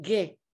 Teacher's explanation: The nomads pronounce the ancient qa as ge.